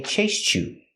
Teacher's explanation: you it's a stop te you can say chase you or you can link the sounds and say chased you you can make the CH sound